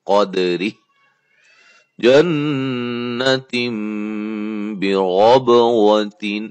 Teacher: نون ساکن اور نون تنوین کے بعد با آ جائے تو کیا ہوتا ہے؟ اقلاب, ٹھیک ہے. نون کو میم سے بدل دیتے ہیں